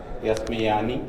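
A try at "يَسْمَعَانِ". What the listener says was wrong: نہیں, جب میم کے اوپر ایک بار حرکات جو تب طے کر لیں گے نا, مثلا یسمعو تو میم کے اوپر زبر ہی رہے گی پوری گردان میں, جیسے را کے نیچے کسرہ ہی ہے پوری گردان میں. آپ دیکھیں گے کہیں تبدیل نہیں ہوئی.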